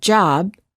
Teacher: if we say the word job we cannot continue the final b sound